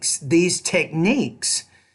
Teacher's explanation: put stress on that second syllable and make it clearer, louder, longer, and higher